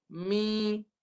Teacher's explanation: Iaitu mim baris bawah dia masuk hidung terus dah. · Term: sengau